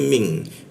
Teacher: N-nya itu berubah jadi eng. Dia jadinya ming.